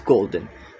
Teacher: The stress is on the first syllable gold and the n does not shift stress. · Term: stress preserving suffix